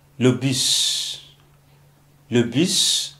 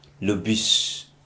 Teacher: in French you don't pronounce the last consonant, but this is an exception